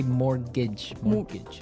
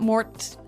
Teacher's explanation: it has a t in it but you don't pronounce it you say mortgage morgage so not Mort mortgage not mortgage morgage